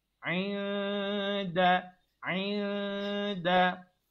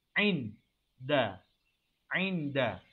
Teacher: maka dia dibaca secara dengung, secara sembunyi. Aida. Dia sembunyikan bunyi nun itu daripada huruf dal. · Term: ikhfa